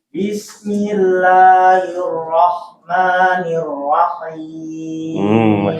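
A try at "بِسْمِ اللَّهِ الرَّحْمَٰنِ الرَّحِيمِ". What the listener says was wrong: Haknya jangan ngorok. Itu PR, nggak apa-apa. Antum sudah bagus hurufnya, tinggal hak tadi. Coba paksa Nah, masih itu dipangkas, dihilangkan.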